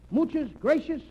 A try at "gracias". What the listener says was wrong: No, not gracious. That word is gracias. You see, in Spanish, the C is pronounced T-H. Gracias. T-H.